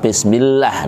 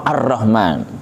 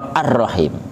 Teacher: di atasnya lam di atasnya ro Arrahman di atasnya ro arrahim tiga dibaca ditekan tapi tanpa dengung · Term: tasdid